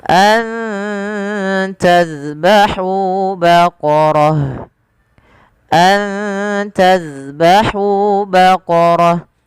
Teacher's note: mim mati bertemu Hamzah ada izhar syafawi dijelaskan suara mimnya dan tidak ada penahanan